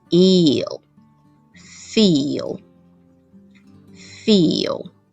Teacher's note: l is after ee, and ee will have a long vowel [i]